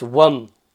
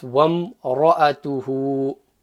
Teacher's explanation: So the waw can't stretch, it has to join that meme. Okay, so it's wam.